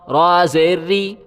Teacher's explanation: را کے نیچے جب بھی زیر آئے گا تو را باریک پڑھا جائے گا